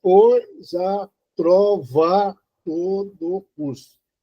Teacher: esse primeiro, o A da trova, você pode notar que ele ficou mais fraco do que o A que está seguindo ele